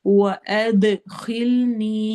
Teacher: اد میں دال کی آواز کو ہلانا ہے، ایکو ساؤنڈ ہوگی ، اس کو کلکلا کہتے ہیں عربک میں، واؤ میں ہونٹ